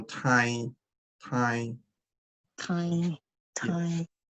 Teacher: when you say that time the back of your tongue will touch the upper part of your mouth and your teeth will not be touching each other at all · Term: nasal n